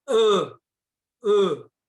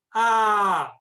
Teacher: ã e o a com o traço ele é aberto a um é fechado e breve o outro é aberto e longo